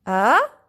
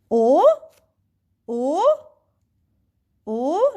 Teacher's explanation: my voice is going from down to up